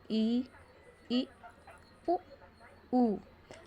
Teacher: मतलब इसमें हमारा मुंह पूरा नहीं खुला है, ना हमारी जीभ ज़्यादा हिल-डुल रही है, तो इसमें सिर्फ हमारे ओष्ठ के द्वारा बोला जा रहा है और जो बहुत कम मात्रा में खुल रहे हैं। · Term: संवृत स्वर